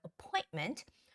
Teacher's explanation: the stress goes on the OI syllable, so appointment